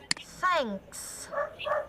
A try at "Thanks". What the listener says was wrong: Okay, don't forget the S sound in the ending of the word.